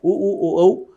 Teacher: जिनको बोलते समय दोनों होठ गोल हो जाए वो वृत्ताकार है, उ ऊ औ, और नहीं हो वो अवृत्ताकार है।